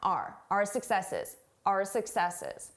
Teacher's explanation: I did not pronounce this as our. I said R. A very reduced sound.